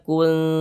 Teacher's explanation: Cara membacanya dibaca samar dan berdengung. Jadi bunyi nun sukunnya itu kita baca samar. Jangan kita baca kun. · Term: ikhfa hakiki akrob